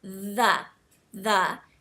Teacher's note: between your teeth and just just practice that initial sound and you should feel sort of a buzzing feeling on your tongue like it sort of vibrates a little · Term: th sound